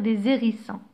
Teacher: le h aspiré interdit la liaison